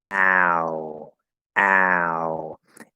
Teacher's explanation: the starting position is very very close to ah